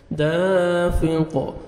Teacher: قاف پہ قلقلہ کریں گے جب سٹاپ کریں گے